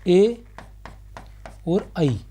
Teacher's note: कंठ तालव्य स्वर, वे स्वर जिनका उच्चारण कंठ व तालु दोनों के सहयोग से होता है